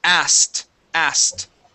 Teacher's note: we don't pronounce the k